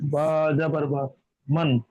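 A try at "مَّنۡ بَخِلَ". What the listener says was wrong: যখন আপনি বাকে নিচ্ছেন তখন আর মান পড়বেন না, মাম, মিম পড়তে হবে, মাম। মাম পড়তে হবে। জি, মাম।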